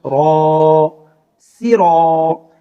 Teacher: را کے اوپر زبر اور اس کے بعد الف مدہ، یہاں را کو کھینچ کر پڑھیں گے